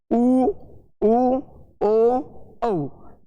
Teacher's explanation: जब हम इन ध्वनियों का उच्चारण करते हैं तो अपने जो होंठ है वो वृत्त रूप धारण कर लेता है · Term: वृत्ताकार